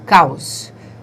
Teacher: o A é a vogal e o O é a semivogal, caos. Por isso o A tem o som mais forte na pronúncia. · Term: ditongos decrescentes